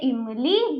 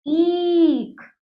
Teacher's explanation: आ से आम, इ से इमली, इ से इमली। ई, छोटी ई को हम जल्दी बोलेंगे और इसको बड़ी ई है ये, इसको हम थोड़ा खींचेंगे। छोटी ई से इमली, बड़ी ई से ईख।